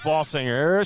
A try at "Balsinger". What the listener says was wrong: There's no N in Balsinger. You said Balsinger. Thought I heard an N sound in there.